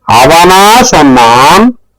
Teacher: அவனா சொன்னான், the stress is on the subject